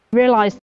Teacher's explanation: she doesn't make it a diphthong, she just lengthens that first part of the vowel